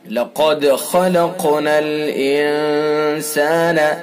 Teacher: خا کو پر کر کے پڑھیں گے، قاف کو پر بھی پڑھیں گے اور قاف کے اندر قلقلہ بھی ہوگا۔ پر یعنی موٹا بھی پڑھا جائے گا قاف، اور اس کے اندر یہ قلقلہ بھی کیا جائے گا۔